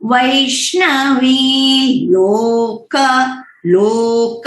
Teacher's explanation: इसमें लो जो है वो नीचे है, अनुदाता है